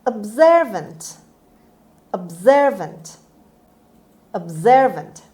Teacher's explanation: the stress is on the second syllable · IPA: /əbˈzɜːrvənt/